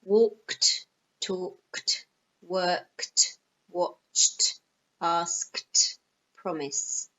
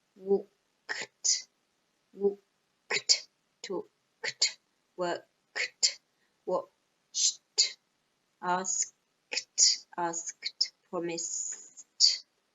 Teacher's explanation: all these verbs end in a sound with no voice